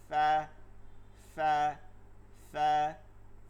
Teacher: নিচের ঠোঁটের পেট উপরের দুই দাঁতের আগা